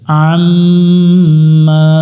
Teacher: মিম অক্ষরের উপর তাসদিদ আছে, এখানে গুন্না করতে হবে, গুন্নাটা করা হচ্ছে ওয়াজিব, না করলে গুনাহ হবে।